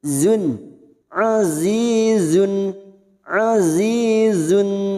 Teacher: tanwin bertemu ha Idhar halq dibaca jelas tanpa mendengung